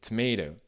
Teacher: C'est quasiment un D, le deuxième T. C'est un T qui est voisé, c'est-à-dire qu'au lieu que les cordes vocales ne vibrent pas, les cordes vocales vibrent plus ou moins.